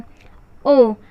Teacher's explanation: और इसी तरह होता है कंठ ओष्ठ ओ, क्योंकि ओ जो है वो आ और उ से मिलकर बना होता है। आ का उच्चारण स्थान है कंठ, उ का उच्चारण स्थान है ओष्ठ, इसीलिए ओ का उच्चारण स्थान हो जाएगा कंठोष्ठ